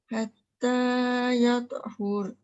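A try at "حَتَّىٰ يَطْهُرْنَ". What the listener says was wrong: Mesti bunyikan nun sekali. Ha dengan ra dah bunyi hur, tapi nun tak ada. Hatta yatahurn.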